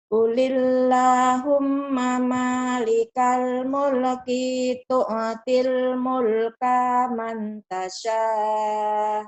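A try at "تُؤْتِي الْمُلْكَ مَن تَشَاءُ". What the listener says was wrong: Yang pendeknya jangan dipanjangin. Mulke. Mulka. Jangan dipanjangin kan pendek, Bu.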